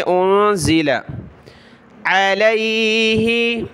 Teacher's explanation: نون ساکن کلرفل ہے، ناک میں آواز پیدا کریں گے